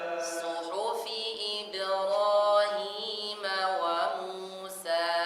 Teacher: Kalimat hi jangan ditekan ya. Nanti kalau tekan seolah-olah ya bertasydid. Jangan dibaca suhufi Ibrahim wa Musa.